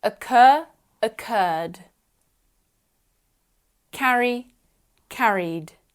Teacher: we match voiced with voiced so we add the voiced consonant D to the end